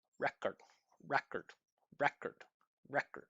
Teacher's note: You can still hear the first syllable going up and the second syllable's down.